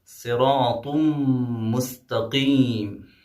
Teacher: طا پہ جو ہے تنوین آئی ہے، اس کے بعد حروف یرملون میں سے میم آیا ہے اس لیے یہاں پہ ادغام ہوگا